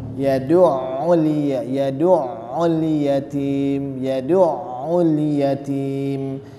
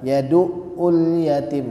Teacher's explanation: Ain keluar dari tengah-tengah tenggorokan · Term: huruf Ain